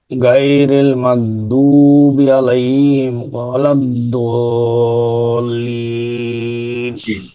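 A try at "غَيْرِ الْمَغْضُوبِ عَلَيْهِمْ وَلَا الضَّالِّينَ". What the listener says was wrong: শেষ শব্দটা বাসানো হয়েছে কিন্তু এটা হবে আপনার গয়রিল গয়রিল গটা আসবে গলার উপরে গয়রিল মাগদুবি আলাইহিম ওয়ালাদ-দাল্লিন এরকম করে আমরা এটা উচ্চারণ করব।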